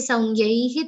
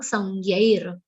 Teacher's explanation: What you have to remember here is this nyai is followed by a visarga, who because of a sandhiniyam, the visarga is pronounced like half r